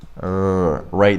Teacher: the tip of your tongue is curled back and it doesn't touch anything you don't you don't touch the your gum Ridge and you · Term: R sound